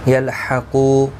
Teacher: قاف حروف مستعلیہ میں سے ہے، پور پڑھا جائے گا